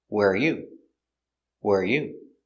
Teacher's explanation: the intonation goes down at the end because it's a information question